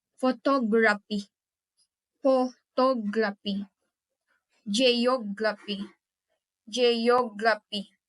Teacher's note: Stress is on the second to the last.